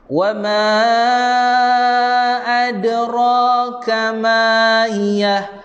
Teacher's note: Pakcik misai jumpa hamzah, baca dengan 4 atau 5 harakat.